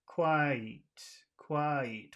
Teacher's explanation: it's two sounds it's one vowel sound well it's one vowel it's one syllable but that syllable has two vowel sounds in it